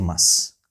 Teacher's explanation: But when we use it inside the sentence, we say must, must, must, must. And sometimes we say must without the t